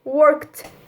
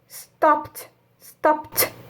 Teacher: O passado de work vai ficar worked, sem som de E, e o D vai ser pronunciado como um T